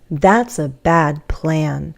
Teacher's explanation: With more stress on plan because that's the final content word in this group.